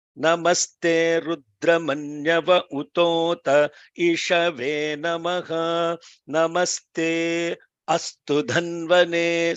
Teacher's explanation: See, every time an vowel is coming, there is a slight break before two short vowels, and there is a long break after a long vowel and a short vowel